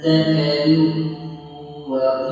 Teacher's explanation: Dalam kalimat tersebut terdapat hukum bacaan idgham bigunnah. Cara membacanya yakni dengan meleburkan bunyi atau suara dua baris ke dalam huruf waw yang disertai dengan dengung selama dua ketukan.